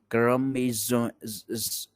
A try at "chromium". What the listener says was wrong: Don't say zh, zh. You have to eliminate that sound. Cro me. It's like Lee. C. So Lee C D. It's like that. Crow me. Me. Okay, you. Say you. Chromium.